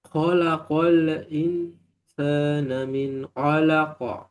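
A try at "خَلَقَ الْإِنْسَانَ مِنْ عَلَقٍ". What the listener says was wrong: Lamnya jangan mantul. Khalaqal. Nah, itu mantul. Khalaqal in. Qal in.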